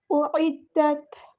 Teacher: عین کو مستحلق middle throat سے ادا کرنا ہے